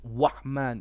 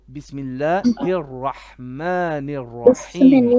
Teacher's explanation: the ra is a letter of the tongue, tip of the tongue, it bounces, okay? It does a repetition or tikrar.